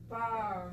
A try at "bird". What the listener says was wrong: Ah, and smiling is nice, but you're going to have better pronunciation if you push your lips forward and open. Not ah, but er.